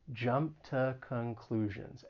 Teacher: For pronunciation, the only thing that I would say is that preposition to It can either be pronounced tu, but sometimes it's pronounced with that schwa sound, and it's going to sound like tuh. And often I think you will hear people say tuh when they're using this phrase.